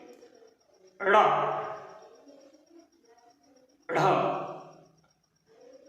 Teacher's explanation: इनमें हमारी जीभ ऊपर से नीचे झटके से गिरती है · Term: उच्छिप्त वर्ण